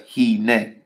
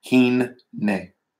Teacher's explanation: Basically, just make sure you have two N's in there to know that you're going to, with the dagesh in the middle of the noon, you're doubling that letter in its pronunciation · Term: doubles the letter